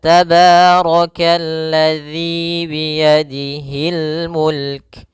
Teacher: ada mad thabi'i yaitu kasrah bertemu ya panjangnya dua harakat